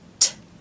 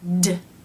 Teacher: T is unvoiced, meaning only air passes through the mouth, and D is voiced, meaning D.